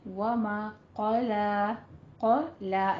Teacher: क़ाफ को आपने पोर पढ़ना है, लाम को फतह कायमा अदा करनी है, 2 काउंट करना है।